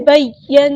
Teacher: نون پہ غنہ زمانی غنہ ہو رہا ہے تو ایک الف کے برابر رکیں گے